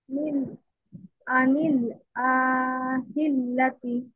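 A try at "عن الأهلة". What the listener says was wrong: লা, টেনে পড়লেন কেন? কেন তিন আলিফ টানবেন? বলেন কেন টেন আলিফ টেনে পড়তে হবে? তাই এখানে কি মদের হরফ আছে না এক আলিফ মাদ আছে? তাহলে তিন আলিফ কেন হবে?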